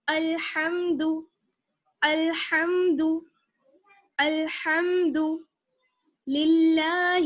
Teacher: الحم، الحم، دال پیش دو، الحمد. ہا کا مخرج یاد رکھیے، حلق کا درمیانی حصہ، حلق کا بیچ والا حصہ